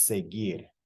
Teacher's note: But a verb like seguir, which is spelled S-E-G-U-I-R, it does end in U-I-R, but we don't pronounce the U. It's seguir.